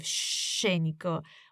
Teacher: scenico, with the emphasis on the first syllable, sce.